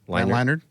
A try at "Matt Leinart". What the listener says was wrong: You're saying a D. Well, you're saying Matt Leinart. No, Matt Leinart.